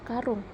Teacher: vokal U tinggi bawah belakang bundar pada kata karung